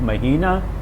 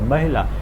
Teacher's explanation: Now, the first line, Mahila and Mahina, you will notice that everything about these two words is the same, except that the middle vowel is long for month, Mahina, and short for Mahila. Now, that is what seems to be playing an important role in the difference in the stress patterns.